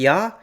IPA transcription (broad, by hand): ja